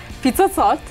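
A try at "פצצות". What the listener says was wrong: There's no I. Pizzazot.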